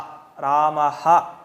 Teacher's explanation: ಈಗ ಅರ್ಧ ವಿಸರ್ಗ ಅಂದ್ರೆ ರಾಮಃ ಅಹ್ ಅಂತ ಹೇಳ್ತಿವಿ ಹಹ ರಾಮಹ ಅಂತ ಹ ಅಂತ ಪೂರ್ತಿ ಹೇಳಿದ್ರೆ ಪೂರ್ತಿ ವಿಸರ್ಗ